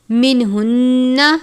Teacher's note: نون مشدد پر غنہ کرتے ہیں